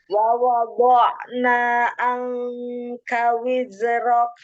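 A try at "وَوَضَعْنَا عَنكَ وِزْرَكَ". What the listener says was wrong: Nah, jangan wizi. Iya, jadi dia ada rokhawah, ngalir ya. Wawunya jangan di dalam wawa, tapi wawa, wawada'na, wawada'na.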